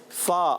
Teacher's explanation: फा होठों से अदा होता है।